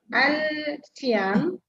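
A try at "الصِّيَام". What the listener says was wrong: Okey, tu huruf Syamsiah. Masuk ni terus.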